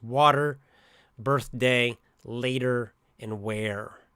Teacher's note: Americans we have quite a hard R right we pronounce it strongly